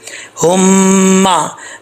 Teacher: یہ ہا جو ہے یہ بھاری آواز کے ساتھ جو ہے وہ ادا کیا جائے گا، اس کا تعلق جو ہے وہ سینے سے ہے